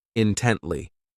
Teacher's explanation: This adverb has 3 syllables, and the stress is on that second syllable